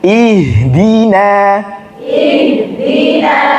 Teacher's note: Nun ketemu Shad Nah di sini nunnya dipertahankan tarkiknya jangan sampai ikut tebal ke Shad